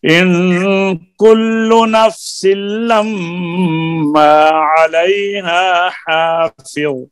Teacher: لما کے میم کے اوپر شد ہے نا, غنہ ہوگا